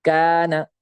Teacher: جیسے کان، الف سے پہلے کاف ہے، کاف پر حروف میں سے نہیں ہے تو یہاں پہ الف بھی اس کے ساتھ باریک ہو جائے گا، الف سے پہلے یہاں پہ باریک حرف آ گیا.